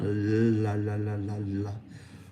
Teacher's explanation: allow the sound, the air to go around or laterally around the tongue, la, la, la, la, la, we create the L.